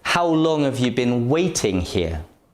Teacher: have you been waiting here the unstressed words can be weak have and you have weak forms they are pronounced together you say being and here aren't stressed but these words don't · The words how, long, and waiting are stressed. · Been and here aren't stressed, but these words don't have weak forms, so the pronunciation stays the same.